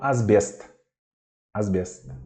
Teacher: Asbest. E também o S, russo S, soa com um som de Z, igual em português.